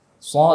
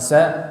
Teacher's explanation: Sha dengan sa makhrajnya sama. Yang bedakan adalah sifat tebal dan tipisnya saja.